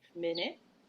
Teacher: minute has a stress on the first syllable and it's a short vowel I sound and so it's kind of like a schwa vowel the I